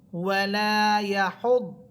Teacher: দদ হরফের উপরে আছে তাসদীদ, হা দদ পেশ হুদ, দদ মোটা হরফ, মোটা করে পড়বেন।